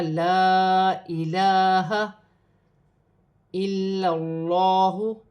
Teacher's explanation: اللہ کی لام سے پہلے زبر آ رہی ہے، اللہ کی لام موٹی پڑھی جائے گی اور ایک الف کی مقدار کھینچ کر پڑھا جائے گا۔